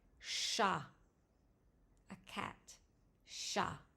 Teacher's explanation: A sound, sort of between the A in hat and the A in father.